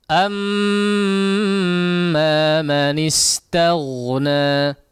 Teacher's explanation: Amma perhatikan digunnahkan untuk huruf mim yang bertasydid.